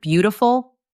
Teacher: in the word beautiful, the stress is on the first part